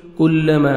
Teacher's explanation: کاف کو باریک پڑھنا ہے، مد جائز ہے.